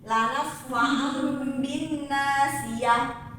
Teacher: Iklab artinya berubah, yaitu pengucapan nun mati atau tanwin yang bertemu dengan huruf ba yang berubah menjadi mim dan disertai dengan gunnah atau dengung